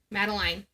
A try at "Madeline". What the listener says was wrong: Madeline. Not line.